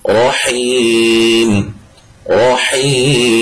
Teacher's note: جب یہاں وقف کریں گے نا تو اس یا مدہ کو مزید ہم لمبا کر دیں گے، 3 کل ٹوٹل جو ہے 3 یا 4 الف جو ہے وہ ہم اس کو لمبا مزید کر کے پڑھ سکتے ہیں۔